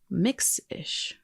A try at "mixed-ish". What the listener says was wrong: Mixed-ish. You said mix-ish. It's mixed-ish.